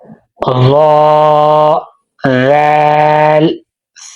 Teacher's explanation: زبان کی نوک اوپر سامنے والے دو دانتوں کے کنارے سے ادا ہوتے ہیں